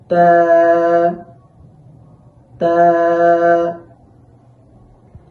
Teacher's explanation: তা উচ্চারণের সময় জিহ্বার আগা সামনের উপরের দুই দাঁতের গোড়ার সাথে লাগাতে হবে।